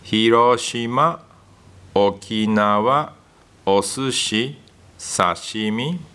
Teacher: Equal stress on each syllable.